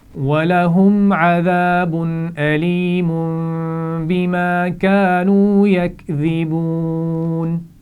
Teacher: اس کے بعد وَلَهُمْ عَذَابٌ تنوین کے بعد حمزہ ہے تو اس لیے یہاں پر غنہ نہیں ہوگا. علیم بما تنوین کے بعد با آ گیا ہے تو یہاں ہم میم سے بدلیں گے اور غنہ بھی کریں گے.